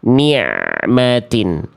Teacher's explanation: nikmatin nikmatin n eh nikmatin nmatin nikmatin nmatin nah ini bacaannya sebenarnya sudah bagus nih tapi masih putus yang barusan harusnya dialirkan bunyi ain sukunnya dialirkan sedikit sampai melafazkan mimnya